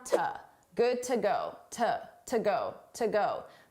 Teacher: to is a reduced sound, an unstressed sound.